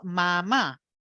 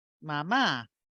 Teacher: hago un cambio la f cero es dinámica Por qué Porque mi F cero empieza alto y va disminuyendo muy rápidamente hasta que llega hacia la base de mi Rango tonal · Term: acento prosódico